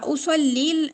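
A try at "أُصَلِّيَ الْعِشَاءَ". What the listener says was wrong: তাহলে উসাল্লিল না করে আপু উসাল্লিয়াল পড়বেন। মানে দুই দুই সুকুন একসাথে আসছে না, ইয়াতে ফাতহা দিয়ে উসাল্লিয়াল ইশা ইশা। হ্যাঁ হ্যাঁ, নাসবিত হবে। উসাল্লিল পড়তে চাচ্ছেন আপনি, ইয়াতে কাসরা দিচ্ছেন?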